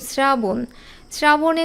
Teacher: তালব্যস এর সাথে যখন র ফলা থাকবে তখনও কিন্তু সেটা দন্তস এর উচ্চারণ হয় যেমন শ্রাবণ শ্রাবণে তালব্যস এর সাথে র ফলা এখানে যদি স